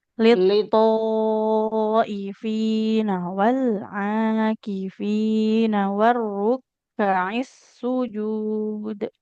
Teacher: Lito, huruf to-nya bertasydid. Jangan lupa ditekan.